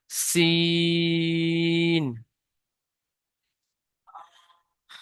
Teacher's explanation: তিন আলিফ টান দিয়ে পড়বেন